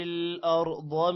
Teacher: ارض، را بھی موٹا ہوگا، ضاد بھی موٹا ہوگا